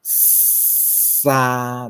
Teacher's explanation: 敢有啥问题？过来，咱过来看第二抓起化音，起化音吼。起化音呢，共款你也看，起化音伊咧读音内底呢，有的、特的甲特即两个，共款，一个是无送去的，一个有送去的，的、特即两个过来擦音，清擦音擦音，擦音就是摩擦啦，摩擦音嘛摩擦音是啥呢？就是你即个，譬如讲沙物件，你当你发拄开始你发现沙对无？即个时阵你是毋是有发现讲， 迄空气呢足紧的，为迄个喙齿旁为迄个喙旁呢，就喷出来 因为迄个空气足紧就摩擦音即种叫做摩擦音所以咱台语的即个清的擦音呢，就是即个沙物件沙即个是擦音摩擦音的另外咱还有一个拿后的擦音就是呵啦，你看，咱袂说哈气的声，因为咱的拿后气管迄个拿后孔较大啦，所以空气较慢啦，但你即个孔较细，